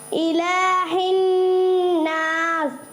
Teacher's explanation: الہ الناس یعنی ہا اور ہا مکس ہو گیا تھوڑا